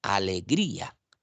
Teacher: me doy cuenta que la vocal y que es la vocal cerrada suena más fuerte no alegría entonces no le tengo que poner tilde a la · Miren, si yo pronuncio la palabra alegría, me doy cuenta que la vocal I, que es la vocal cerrada, suena más fuerte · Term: hiato, hiato acentual